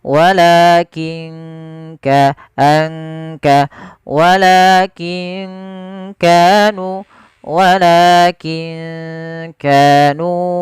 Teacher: Maaf ke huruf kaf. Kaf makhrajnya dari pangkal tenggorokan kita.